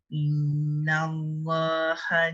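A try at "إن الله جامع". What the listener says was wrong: Wajib guna lama sikit.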